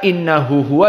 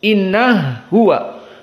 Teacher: Maka innahu huwa jadi inna huwa dinamakan dengan idgham al-kabir.